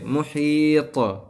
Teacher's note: آخر میں طا کے اوپر قلقلہ کریں گے، جب رکیں گے تو ساکن کر دیں گے، اس کے بعد قلقلہ کریں گے، یعنی اس کے پڑھتے وقت اس کے مخرج ٹکر کھا کر واپس لوٹیں گے